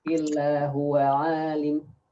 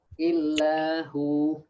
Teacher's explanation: But if you stop here, illa hu, so it becomes mad because it's dhamma followed by waw sukun